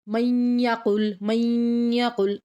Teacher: میم کو یا کے ساتھ ملا کے پڑھیں گے، نون سائلنٹ ہو جائے گا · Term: غنہ